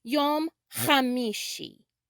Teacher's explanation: the hebrew letter which is the eighth letter in the aleph bet or the hebrew alphabet which is sometimes written ch in the english alphabet sounds like you're clearing your throat